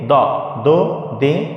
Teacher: দত অক্ষর মাড়ির দাঁতের গোড়া থেকে মোটা করে পড়তে হয়। এক কথায় আপনার উচ্চারণটা হতে হবে মোটা, মাড়ির দাঁত দিয়ে এখানে উচ্চারণ হয় দত, তাহলে দোয়া হবে না, দত।